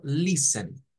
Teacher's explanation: trate de no decir la t diga Solo Listen nuevamente correcto con esa ojo la t mud